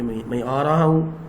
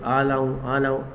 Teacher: لام اور را اتنا قریب ہیں کہ آپ نے دیکھا ہوگا جو چھوٹے بچے ہوتے ہیں وہ اکثر را کی جگہ پہ لا بولتے ہیں